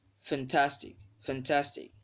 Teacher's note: the stress mark is also on the second syllable from the end